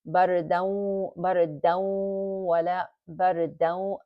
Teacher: We're going to read this as bardaw, bardaw, wala, bardaw. See, the dal with tanween gets merged with the wow. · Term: idgham